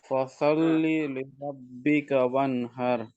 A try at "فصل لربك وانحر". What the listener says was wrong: No. Correct, but ra should be tafkhim. فصل لربك وانحر. See, كوثر وانحر أبطر. Not كوثر وانحر أبطر. Not flat ra. This is tafkhim ra. After fatha. So كوثر وانحر أبطر.